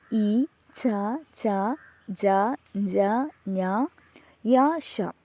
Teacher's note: താലു ഉപയോഗിച്ചുകൊണ്ട് പ്രൊഡ്യൂസ് ചെയ്യുന്ന സൗണ്ടുകൾ